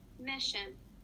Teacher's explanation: The stress goes on the first syllable, or mi, in the word mission because it comes before the SION or sh sound.